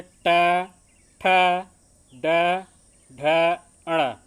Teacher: मूर्धन्य उसे कहते हैं जो हमारी जीभ जो है थोड़ी सी मुड़ जाती है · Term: मूर्धन्य व्यंजन